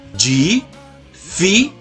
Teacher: A penúltima sílaba é a sílaba forte, a sílaba tônica. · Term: paroxítona